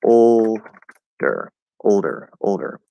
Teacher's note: instead of a regular o in the first syllable we're going to do an l colored o and it's going to be ol instead of o o o